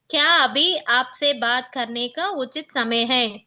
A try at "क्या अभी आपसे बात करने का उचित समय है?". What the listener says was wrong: Good. Nice.